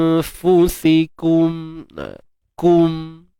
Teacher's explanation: Kita matikan mim ni dengan menzahirkannya, jelaskan mim.